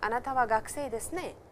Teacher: aren't you a student, with a rising intonation